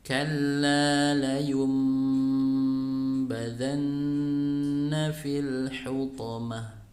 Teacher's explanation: Jadi kalau ada nun sukun atau tanwin bertemu dengan huruf ba, maka, ya, maka suara nun sukun atau tanwin dirubah menjadi suara mim, kemudian dibaca dengan gunnah, yaitu ditahan 3 harokat. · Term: iqlab